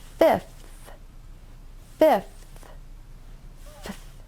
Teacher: First, your top teeth must touch your bottom lip to make the F sound. Then the TH sound is made with your tongue sticking between your top and bottom front teeth